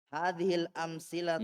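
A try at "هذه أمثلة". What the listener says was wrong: Tidak ada alif lamnya.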